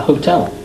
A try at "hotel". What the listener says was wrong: Hotel? No, without an H. Hotel.